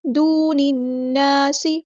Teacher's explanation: واؤ مد آ گیا تو مد اصلی کریں گے، ایک الف کے برابر لمبا کریں گے۔